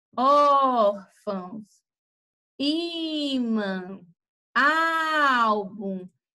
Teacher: o ó, ela vai ser mais forte do que o fão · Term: paroxítona